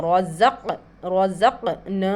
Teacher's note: रज़क़नाहुम रा के ऊपर खड़ा ज़बर है, इसको मोटा पढ़ेंगे ज़क़, ज़ा को हम अच्छा ज़ाहिर करके पढ़ेंगे। क़ाफ के ऊपर तशदीद है, क़ुतबे जद्दीन में से क़ाफ आ गया है यहाँ पर, इसको झटका देकर पढ़ेंगे